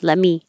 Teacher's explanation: instead of a perfect let me don't say the t